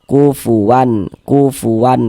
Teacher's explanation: Bunyi nun sukqon atau bunyi tanwinnya itu dibaca jelas kemudian tidak didengungkan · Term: izhar halqi, idhar halqi